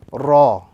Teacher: the letter Ra, is pronounced when the tip of the tongue slightly touches the upper gums